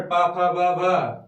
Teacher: उ और पा वर्ग के सभी वर्ण पा, फा, बा, भा किससे बोले जाएंगे? ओष्ठ से, यानी ओठ से